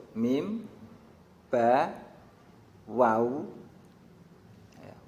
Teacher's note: Waw ini makhrajnya adalah kedua bibir atas dan bawah · kedua bibir atas dan bawah. Ini menjadi makhrajnya 3 huruf, yaitu mim, ba, dan waw